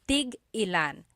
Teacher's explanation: Tig-ilan is a homonym, meaning it can have different translations depending on how it's pronounced. So tig-ilan, when there's a hyphen in it, you have to have that glottal stop.